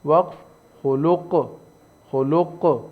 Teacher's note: قاف بھی حروف قلقلہ میں سے ہے، یہاں پر قاف پہ قلقلہ ہوا وقفاً